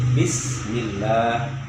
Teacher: Sin harus ada angin yang mengalir, berhembus angin.